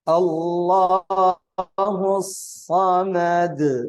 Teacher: Qalqalahnya juga ayat kedua harus jelas, karena ini qalqalah yang berada di akhir ayat.